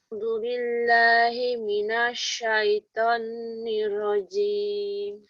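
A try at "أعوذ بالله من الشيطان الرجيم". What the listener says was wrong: Tonya dipanjangkan tuh. A'udzu billahi minasyaiton. Syaiton.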